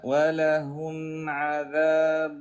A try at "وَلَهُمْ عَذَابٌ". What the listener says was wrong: شوف عندك مشكله باظهار الميم عندك مشكله باظهار النون